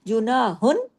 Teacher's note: आगे हमजा अलिफ है जो कि हरफ हल्की है तो यहां कोई गुना नहीं होगा यूना हुन लेकिन बारीकी से होगा